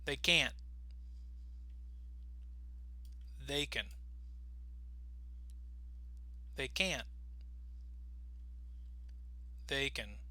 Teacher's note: notice our voice is going to go down on the word can because in context we're going to pronounce it with a schwa sound